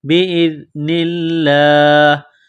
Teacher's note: زال کو پڑھتے وقت زبان تھوڑی سی باہر نکالیں گے، زال کو نرم کریں گے